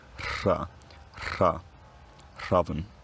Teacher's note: At some point, it's not completely clear when, this chr cluster collapses into a single sound. It has all the articulatory characteristics of that trilled r, except it's pronounced without the voice box buzzing. So, chra, chra, chraven.